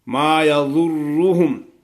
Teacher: ضاد کو موٹا پڑھیں گے، را کو بھی موٹا پڑھیں گے